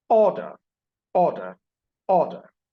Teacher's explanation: And that's a high pitch. And that's also kind of a high fall. The loudness is high.